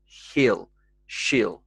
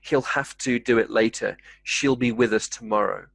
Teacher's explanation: the e sound becomes more like an i sound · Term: more of an i sound